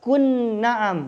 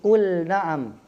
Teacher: Kul, lam sukun bertemu dengan nun. Jadi jangan baca kun na'am tetapi kul na'am. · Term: izhar